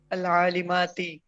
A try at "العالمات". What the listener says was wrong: جزاک اللہ بالکل ٹھیک شاباش.